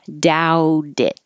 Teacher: The T changes to a D and it connects.